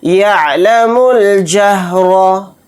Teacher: را کو یہاں پر موٹا پڑھیں گے کیونکہ را کے اوپر زبر ہے